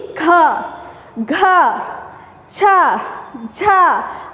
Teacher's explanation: ಒತ್ತಿ ಉಚ್ಚಾರ ಮಾಡಬೇಕು ಸೊ ಅದಕ್ಕೆ ನಮಗೆ ಉಸಿರು ಜಾಸ್ತಿ ಬೇಕಾಗುತ್ತೆ ಸೋ ಈ ಎರಡು ಮತ್ತೆ ನಾಲ್ಕನೇ ಸಾಲಿನಲ್ಲಿ ಇರತಕ್ಕಂತ ಅಕ್ಷರಗಳನ್ನ ನಾವು ಮಹಾಪ್ರಾಣ ಅಂತ